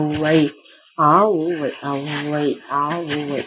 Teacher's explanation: அகரத்தையும் உகரத்தையும் கூட்டி ஒளிக்க அவை அவகாரத்தை போல ஒளிக்கும் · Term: அவகாரம்